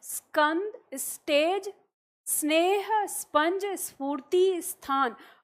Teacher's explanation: क से लेकर म तक स्पर्श व्यंजन कोई होगा तो इस स से पहले आपको इ की ध्वनि सुनाई देती है